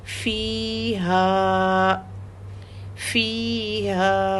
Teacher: فا کے ساتھ یا ہے اس لیے 2 حرکت، اور ہا کے ساتھ الف ہے اس لیے 2 حرکت